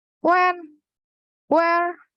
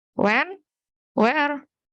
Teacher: information sought versus repetition requested, fall versus rise